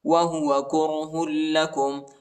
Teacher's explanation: ہاں کو لام کے ساتھ ملائیں گے اور لام کو شدت کے ساتھ سختی کے ساتھ پڑھیں گے